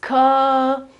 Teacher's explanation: In fact, here it's written like a sort of an A. The colon here means that the vowel is longer